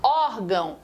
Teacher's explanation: quando você fala órgão, a tônica não é o ão, a tônica é o or